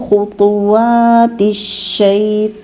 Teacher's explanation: ایک تو خو اور طا دونوں موٹے ہیں، پھر آگے باریک حروف ہیں، پھر شین مشدد ہے